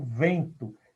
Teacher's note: Então, eu falo vento. Eu não escuto o som N. Então, aqui eu tenho 4 sons. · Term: nasal